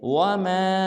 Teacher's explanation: وما کے اوپر دیکھیں تو مد ہے، اس کو 3 الف مقدار لمبا کریں گے